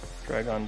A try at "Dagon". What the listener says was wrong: Dragon. There's no R in it.